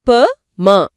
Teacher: அடுத்தது ப ம இந்த இரண்டு மெய்களும் மேலிதலும் கீழ் இதலும் பொருந்துவதால அதாவது இரண்டு உதடுகளும் ஒட்டுவதால பிறக்குது